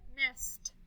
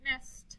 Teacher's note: I hear a T that time.